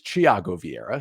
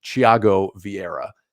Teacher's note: in Portuguese the th sound makes a cha